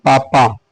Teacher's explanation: बिना ओष्ठ को सटाए पापा नहीं कह सकते हैं